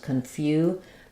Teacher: the letter U has the two Sounds here it has the gliding Y and the U so confu the letter c I say the sh sound and